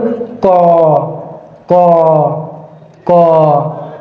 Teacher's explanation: আমি যদি ক উচ্চারণ করি আমার মুখের সামনের কাগজটি সরবে না অর্থাৎ এটি স্থির থাকবে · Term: অল্পপ্রাণ